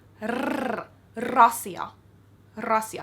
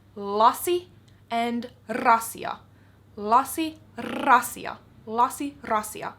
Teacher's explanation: R in Finnish is a very strong rolling sound, so like rasia.